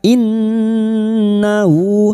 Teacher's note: nun yang bertasdid ghunah musyadadah. Kita dengungkan selama tiga harakat